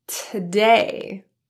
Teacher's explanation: the vowel in two in the word today is reduced tah since it's unstressed and in an unstressed syllable you see